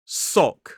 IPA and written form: sɒk (sock)